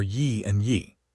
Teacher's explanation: Then following our familiar Y pattern, Y plus I gives Y and Y plus I gives Y. Both with a Y glide in front of that E sound.